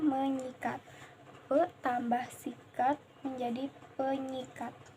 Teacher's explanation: fonem s pada kata sikat itu diluluhkan dan dinyawakan dengan fonem nasalnya yang ada pada prefiks me itu. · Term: proses peluluhan fonem